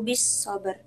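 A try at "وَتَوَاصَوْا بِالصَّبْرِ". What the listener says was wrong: Oke, roknya kurang tebal. Coba sedikit lagi. Yang bis sabr. Bukan ber kalau ber ini masih tipis tapi ber bis sabr. Oke, masih tipis suaranya ya. Or. Bis sabr.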